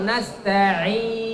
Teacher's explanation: Nasta'in itu ketika panjangnya itu tidak boleh ke hidung. Kebanyakan kita, ya, coba membuktikan dia masuk ke hidung ketika ditutup hidungnya berpengaruh kepada suaranya. · Tapi ain itu tidak boleh ke hidung.